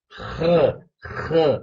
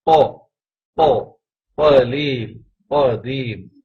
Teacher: خا کے مخرج کے وقت گلا کھرکھرا ہوگا، خ خ اس طرح ادا ہوگا، اور قاف کے مخرج کے اندر جو ہے آواز ٹکرائے گی، جیسے قو، قو، قلیل، قدیم۔